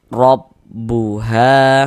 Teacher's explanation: Harakat fathah atau tanda baca fathah. Huruf ro ini kita baca tabkhim. Kita baca tebal sehingga pangkal lidah kita naik terangkat ke atas ketika kita mengucapkannya. Kita tebalkan huruf rnya.